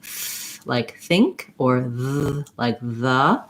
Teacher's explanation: So if I'm saying th, like think, or th, like the, it's called an interdental because my tongue is between my teeth